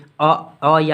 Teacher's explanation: अ अ या आ का उच्चारण स्थान तो कंठ बोलिएगा